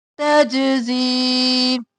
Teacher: جیم قلقلہ زا سختی سے اور یا مدہ ہے کھینچیں گے